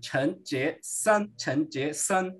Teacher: E lembrando, né, chinês a gente tem a entonação. Então, ó, san é o primeiro tom, jie é o segundo e o chan é o segundo tom também